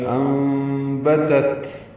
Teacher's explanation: دوسری تا پہ ہمس ہے کیونکہ تا ساکن ہے، اور سین سیٹی جیسی آواز سے نکلے گا